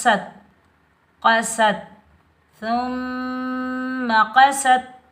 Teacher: سین سختی اور سیٹی والا حرف ہے تو سین پر ہم سیٹی کی آواز نکالیں گے۔ سین کے اوپر زبر، سین کو ہم تا ساکن کے ساتھ ملائیں گے، بغیر کھینچے پڑھیں گے۔